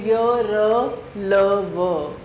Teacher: इसलिए इन्हें अंतस्थ व्यंजन कहा जाता है। इनका उच्चारण करते समय हवा मुख के आंतरिक अंगों को कम स्पर्श करती है और उसकी गति भीतर की ओर होती है।